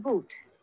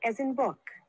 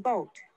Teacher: The vowel sounds produced in the back of the mouth are oo as in boot, as in book, O as in boat, aw as in bought